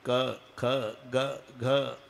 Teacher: क ख ग घ हे कंठे स्थान आहे. इथे उगम आहे.